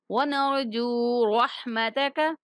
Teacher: جیم کو کھینچیں گے، واو مدہ آ رہا ہے